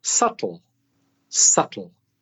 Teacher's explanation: the letter B is silent the B is silent but as well as that the L